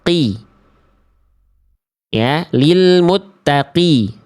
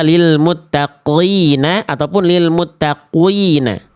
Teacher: Contohnya kalau qf berharakat ketika ee huruf qof ketika berharakat adalah ketika qof-nya berharakat kasrah. Jadi huruf qf berharakat kasrah itu kadar tebalnya berkurang. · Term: tafhim nisbi